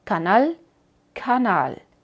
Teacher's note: tenemos este fenómeno que sale más aire como en una explosión